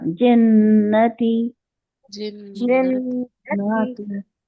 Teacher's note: ना को ज्यादा नहीं खींचना है, नाती नहीं पढ़ेंगे, मद्दा नहीं है। नून जबन ना।